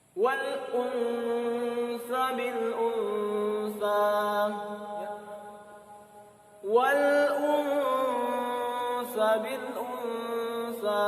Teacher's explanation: Ya, tetapi wal unsa bil unsa. Samar ya, dengan suara berdengung. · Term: ikhfa hakiki